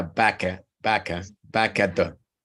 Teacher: incluso esta K, la puedes pegar al at y queda back at the. Entonces se convierte en un solo sonido, the.